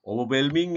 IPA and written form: ˌəʊvəˈwɛlmɪŋ (Overwhelming)